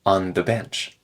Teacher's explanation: that n and th connect together